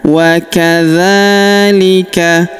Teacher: Waadzalika huruf dza kita panjangkan dua harakat karena terdapat alif kecil di atasnya.